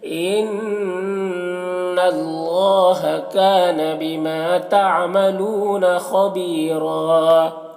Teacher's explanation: کانا میں بھی الف مدہ ہے، بیما میں الف مدہ ہے، تعملون لو میں واو مدہ ہے، خبیرہ خا کو پر پڑھ رہا ہے، حروف مستعلیہ میں سے یا مدہ ہے اور یہاں پر را کو پر پڑھیں گے اور وقف کی صورت میں ایک زبر کے ساتھ الف پڑھیں گے.